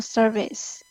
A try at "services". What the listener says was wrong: Okay, so this word is services. I think you already know the word or how to pronounce the word service. The difference is that it has letter S, so you will say services.